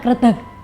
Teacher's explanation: ketika orang Banyumas mengucapkan kretek, akhiran G-nya akan dibaca secara jelas. Sementara kalau di Solo, intonasinya berubah menjadi kretek.